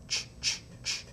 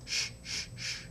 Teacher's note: These are all unvoiced sounds.